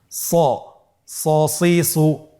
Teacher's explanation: হরফটি যেহেতু মোটা অক্ষর, এই হরফটি সা বলা যাবে না, স বলতে হবে, একটু মোটা করে বলতে হবে